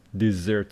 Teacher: This one is dessert, stress on the second syllable.